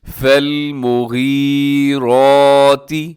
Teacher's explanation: را کے اوپر حرکت ہے تو ہم نے را کو موٹا پڑھنا ہے